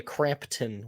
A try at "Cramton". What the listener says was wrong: There's no P though. It's Cramton,